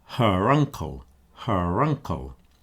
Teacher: I'm separating the vowels by reinstating the r sound.